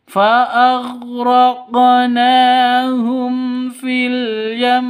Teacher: Di sini ada mim mati bertemu dengan fa ya. Mim mati bertemu dengan fa jelas terang. Karena izhar safa syafawi. Izhar syafawi jelas tidak boleh disentak. tidak boleh didengungkan.